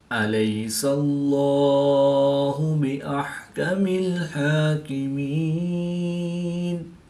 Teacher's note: لام سے پہلے سین پر زبر ہے تو اس کو پر یعنی موٹا پڑھیں گے